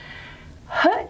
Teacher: the vocal folds are just held apart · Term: glottal